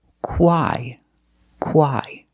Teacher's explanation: So the CH makes the K sound, like the letter K, K, K. Then we use the W sound, qu, qu, together with a long I, quai, quai.